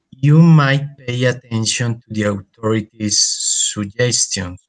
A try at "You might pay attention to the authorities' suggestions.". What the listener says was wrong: Suggestions, very good.